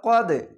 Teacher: কলকলা ধাক্কা মেরে নিচে সাউন্ড আসবে